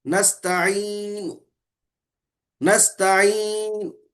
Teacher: بغیر آواز کے ضمے کا اشارہ کرنا ہے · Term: اشمام